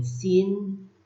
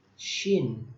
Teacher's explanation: kalau sin dia itu tipis, nah kalau shin dia itu tebal.